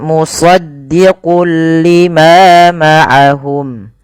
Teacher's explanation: Isti'ala itu pangkal lidahnya terangkat. Kemudian idbaq. Idbaq itu lidah kita lebih melekat dengan langit-langit atas. · shad itu harus ditebalkan karena dia punya huruf namanya sifat isti'la tafkhim ya. Istiala dia harus tebal.